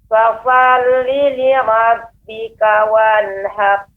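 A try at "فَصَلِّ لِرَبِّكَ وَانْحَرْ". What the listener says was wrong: Ibu, pengucapannya untuk ra yang tafkhim ditebalkan tidak terlalu pendek. Sar, har, ya, tapi dia har, ada juga terdengar ra ya, akan tapi dia lebih tebal dan tidak terus singkat. Har, dia terus sedikit. Har. Wanhar.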